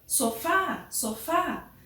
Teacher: Então, o fá é a sílaba tônica